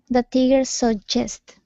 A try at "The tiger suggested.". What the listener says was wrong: So you pronounce suggest just fine, but we need an ed ending here. So this word is suggested.